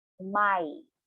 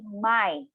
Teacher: Again, this should be, it is written as a 2-syllable, but when you pronounce this, it sounds like a 1-syllable